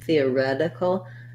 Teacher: this t becomes more like a d it's a flap because it's between the two vowels and it's not followed by a stressed syllable and then we